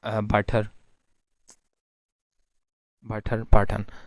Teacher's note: London Cockney accent में, यानी जो लंदन का एक एक्सेंट है जिसे कॉकनी एक्सेंट कहते हैं, उधर जो ग्लॉटल स्टॉप है वो बिटवीन टू वावल्स भी आ जाता है